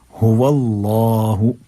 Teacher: अगर उससे पहले पेश हो या उससे पहले ज़बर हो तो हम इसको फिर मोटा करके पुर करके पढ़ते हैं। हुवल्लाहु, पूरा मुंह हमारा भर जाता है।